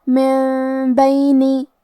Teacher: با حروف الاقلاب میں سے ہے اور اقلاب کا معنی ہے بدل دینا تو ہم یہ نون ساکن کو میم میں بدل کے غنہ کے ساتھ یہ حکم کو ادا کریں گے